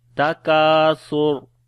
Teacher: سا کو نرم پڑھیں گے اور را کو موٹا پڑھیں گے